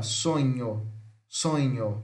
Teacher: E o nhe, que é o NH, nasal palatal sonora